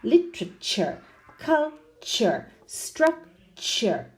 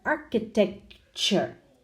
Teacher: the T makes a ch sound